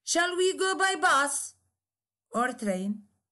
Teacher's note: it contains a separate nucleus for each alternative